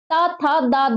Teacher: जीभ कहां लग रही है? जीभ लग रही है दांतों पे।